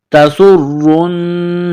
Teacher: تسر، را کو نون کے ساتھ ملائیں گے، نون مشدد ہے تو یہاں غنہ کریں گے. تسر، نون کالا زبرنا، تسرن، غا زیر غی، را یا زیر ری، را کو باریک کرنا ہے.